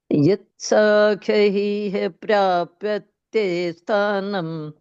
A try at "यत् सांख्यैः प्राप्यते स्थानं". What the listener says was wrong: साख्य ही नहीं है, साख्य ही नहीं है, सांख्य ही है। ये डे जो बीच में है, ये बिंदी है ये। ये सांख्य ही, सांख्य ही। साख्य ही नहीं है, साख्य ही नहीं है, सांख्य ही। सा के ऊपर बिंदी है।